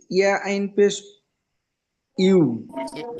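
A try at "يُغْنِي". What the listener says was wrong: এটা তো আইন নয় তো, এটা তো আইন নয়।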